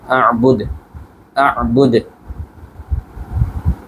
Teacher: দালের উপরে আমরা থেমেছি, থামার কারণে সাকিন করেছি এবং সাকিন করার কারণে কিন্তু কলকলা হয়ে গেছে